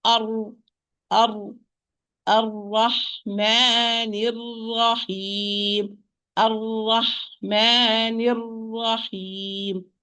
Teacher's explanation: the tip of the tongue will be trilled, but only once, not too much. If you trill it too much, if you trill the tip of the tongue too much, you will have more than one ra, and this is forbidden in the Arabic language. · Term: repetition